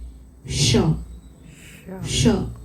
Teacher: થાય જ્યારે ષ બોલીએ ને ત્યારે અહીંયાથી જીભ અંદરથી ઊંચકાય અને જ્યારે પેલો ષ બોલીએ ને તો મોઢાની જે ગુફા કહેવાય ને બકલ કેવિટી એમાં વચ્ચે હોલો સ્પેસ થાય